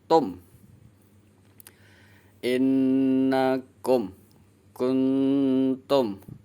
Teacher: Idhar artinya jelas, safawi itu huruf yang keluar dari dua bibir. Jadi jelaskan huruf mimnya. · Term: idhar safawi